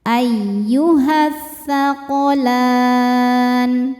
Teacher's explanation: Karena alif lam menghadapi huruf syamsiyah yaitu tsa. Cara bacanya alif lam tidak dibaca kita masukkan langsung ke tsa atau disebut idgham syamsi.